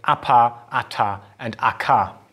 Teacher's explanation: you can feel that your vocal folds sort of close off in between and they stop vibrating for a brief moment and then they kick back in so there is really that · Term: voiceless sounds